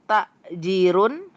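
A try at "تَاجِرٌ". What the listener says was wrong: Ini bukan takjirun tapi tajirun. Pakai domatain ya. Ya, jimnya kan nggak ada ya-nya, nggak ada tanda-tanda panjang. Ya pendek ya.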